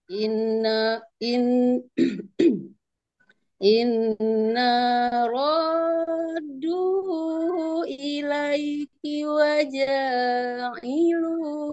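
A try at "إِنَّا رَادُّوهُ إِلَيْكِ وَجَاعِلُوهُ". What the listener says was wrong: Panjangan, janya kepanjangan. Ilaiki waja'ilu.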